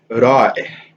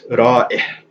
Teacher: This word is Ra'ih. So there's the stop, but then the stop sort of is followed by this kasra, this I sound.